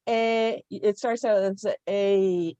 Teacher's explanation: your mouth moves during the formation of the sound A. It moves. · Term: diphthong